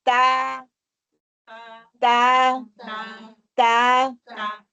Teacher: زبان کی نوک کو سامنے والے دانتوں کی جڑ سے لگا کر اس کی باریک آواز نکالیں گے. زبان کی نوک کو سامنے والے دانتوں کی جڑ سے لگا کر، جبکہ زبان کا پچھلا حصہ بھی اس کے لیے اٹھے گا، کیونکہ استعلا صفت جو ہے نا اس میں پائی جاتی ہے، اور تو میں اطباق بھی پائی جاتی ہے.